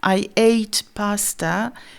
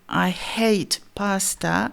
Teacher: le son qui s'appelle une consonne fricative glottale qui va être présente dans le mot hate, qui veut dire détester, mais pas dans le mot ate, qui veut dire manger ou passer.